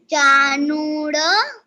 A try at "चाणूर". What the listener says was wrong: नूड़ नूड़ नहीं बोलना है, कंस चाणूर मर्दनम।